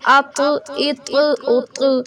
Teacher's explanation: یہ تواں نہیں، ناک میں آواز نہیں جاتی بلکہ ہم اس کو موٹا پور کر کے پڑھتے ہیں